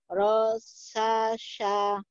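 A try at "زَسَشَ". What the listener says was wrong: Bukan tro, ada titiknya. Zazai. Zasasha.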